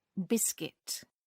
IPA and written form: ˈbɪskɪt (biscuit)